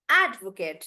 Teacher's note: the stress is on ad, and I'm making that bigger